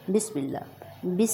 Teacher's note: ہم لفظ اللہ کو اپ بولٹ نہیں بولیں گے باریک بولیں گے کیونکہ لفظ اللہ کے لام سے پہلے زیر آئی ہے